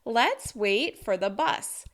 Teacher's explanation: let's, wait, and bus are stressed in this sentence, and for and the are reduced because they are function words